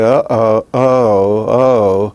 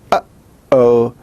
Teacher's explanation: you have that little stop that is made in the back of your throat as by using the epiglottis. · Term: glottal stop